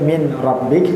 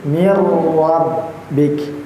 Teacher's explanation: Jadi jangan sampai min rabbik tapi mirbik ya ditahan sebanyak dua harakat.